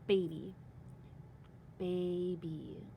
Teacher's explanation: I had a long A at the end of that first syllable.